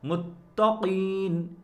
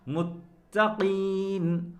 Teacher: اب دوبارہ سنیں، متقین، قاف اپنی جگہ موٹا ہوا لیکن تا کو باریک ہی رکھا گیا۔